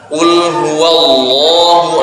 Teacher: lidah yang bagian belakang ini kalau kita tinggikan kalau kita naikkan maka suara akan menebal